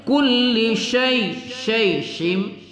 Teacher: Jadi berdesis ya. Angin berhembus ketika kita melafazkan huruf. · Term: sifat tafasyi